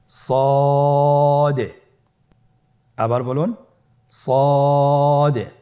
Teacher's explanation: সদ হরফটি পুর হরফ। মোটা হরফ উচ্চারণ ক্ষেত্রে মোটা করে পড়তে হবে এবং উচ্চারণ করার সময় তিন আলিফ টেনে পড়তে হবে।